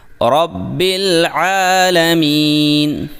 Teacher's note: عین کو حلق کے درمیان سے واضح نکالیں اور میم کے بعد یا مدہ کو 2 حرکات کے برابر لمبا کریں۔